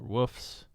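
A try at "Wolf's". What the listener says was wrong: Not woofs. Wolves. You got to add that L in there.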